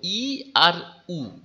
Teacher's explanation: ই আর উ যখন উচ্চারণ করছো তখন দেখো ঠোঁট দুটো খুব কম খোলে, আর মুখের ভিতরে জায়গাটা একেবারে থাকে না বললেই চলে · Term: সংবৃত